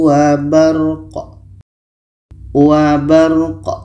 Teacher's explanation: Ra dibaca, qa dibaca. Qa ini mati maka qalqalah, ada pantulan.